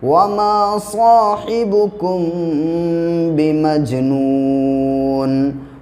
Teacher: میم ساکن کے بعد جب با آتا ہے تو میم پہ کیا کریں گے؟ اخفا کریں گے، آواز کو ناک میں روکیں گے۔